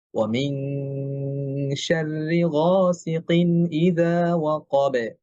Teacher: বা একটা পাতলা হরফ, কলকলাটাও পাতলা হবে